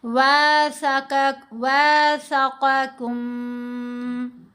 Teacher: میم کی آواز کو ناک میں پڑا جائے گا، غنہ کیا جائے گا۔ وَاثَقَكُم، یہ جو کم پہ ہم رکے، 2 حرکات کی مقدار ہم نے اس کے اوپر غنہ کیا، ٹھیک ہے؟ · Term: اخفائے شفوی